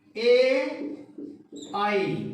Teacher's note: इनका उच्चारण स्थान है कंठ और तालु, इसीलिए ये कंठ तालव्य कहलाते हैं